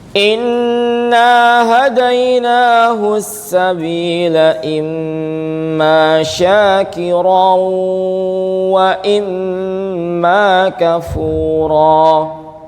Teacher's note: nun tasydid dan mim tasydid ini tingkatan dengungnya itu paling panjang ya dibandingkan ikhfa